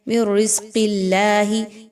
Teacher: اس میں دیکھیں تو قاف کو موٹا پڑھیے